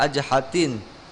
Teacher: Tadi dibaca ajhatin, jadi nunnya hilang, gitu ya. Ajnihatin dibaca ajhatin.